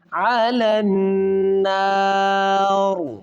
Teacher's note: علی النار، ری پڑھیں گے، جب سٹاپ کریں گے تو یہ را ساکن ہو جائے گی